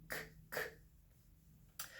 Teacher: And then there are some sounds where the back of my tongue is doing most or all of the work, like k, k. The front of my tongue can stay down completely, and the back of my tongue will go k, k, and it touches the roof of my mouth. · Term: back sound